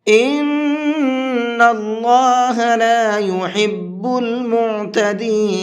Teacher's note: اس نون کے اندر غنہ کریں گے، اس لیے کہ نون کے اوپر تشدید ہے